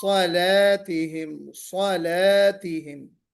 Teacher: صاد موٹا ہے، لام باریک ہے